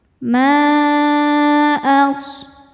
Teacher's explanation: Maka mimnya dipanjangkan boleh empat boleh lima harakat. Ma as shadnya berdesis karena punya sifat namanya shofir ya. · Sodnya berdesis karena punya sifat namanya sofir ya, yaitu berdesis seperti suara angsa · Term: mad jaiz munfasil